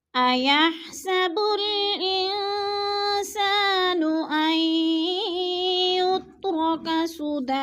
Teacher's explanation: نون ساکن کے بعد سین حروف اقفا میں سے ہے تو اخفا کریں گے، ناک میں آواز کو چھپا کر پڑھیں گے. اور سا پہ الف مدہ ہے، الف مدہ کو تھوڑا سا کھینچ کر پڑھنا ہے.